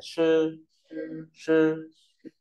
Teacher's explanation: SH đọc cong lưỡi này